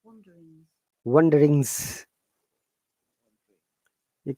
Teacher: G is silent, but S is a sound like Z. wanderings, Wonderings. · There is no G sound. And there is a schwa sound.